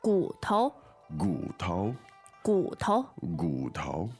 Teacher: As it happens, gu is a third tone, right? Yes, and 头 is neutral. It's kind of neutral.